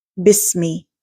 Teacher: there's a weak or slight continuation of breath, whispering and expulsion of air.